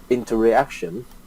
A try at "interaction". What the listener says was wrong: It's not interreaction, it's interaction. The interaction between A and B.